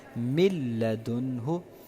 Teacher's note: آپ کو نون مطلب سننے کو نہیں ملے گا، بلکہ ہم اس کو جو ہے نا لام میں مدغم کرتے ہیں من لدنہ، لیکن غنہ نہیں کریں گے۔